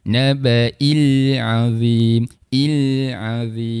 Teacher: Sifat huruf lam dia tidak bersifat qalqalah. Kita jelaskan saja huruf lamnya.